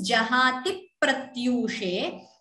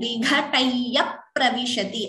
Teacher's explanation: so that p is doubling. Similarly, vighataya pravishati, again the p is doubling. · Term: dvitvams